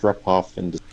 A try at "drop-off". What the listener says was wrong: I think you kind of did drop, and I would do drop. So instead of I would do ah, a more open sound like the ah in father. Drop. Inda, again the TH versus D here.